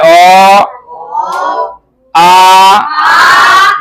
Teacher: जब इसको बोलेंगे इसका उच्चारण करेंगे तो कंठ से आवाज निकलेगा